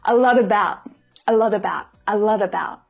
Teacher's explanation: Now, even though the letter T is at the end of the word lot, it's followed by a vowel sound, and in spoken English, these words would pull together. So you get a T between two vowel sounds. It makes a D sound.